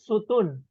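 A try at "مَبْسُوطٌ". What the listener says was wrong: mabesutun, panjang su-nya.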